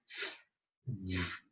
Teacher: So it's the lower teeth and the upper lip. So we call it labial dental.